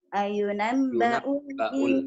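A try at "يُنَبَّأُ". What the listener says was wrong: langsung nggak pakai a,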